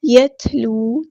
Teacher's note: تا ساکن میں ہمس کی صرف شو کرنی ہے، یت یعنی آواز کو دھیما کرتے جانا ہے، یت پہ آئے گی آواز لیکن تھ اس طرح، اور ہم نے سانس جاری رکھنی ہے۔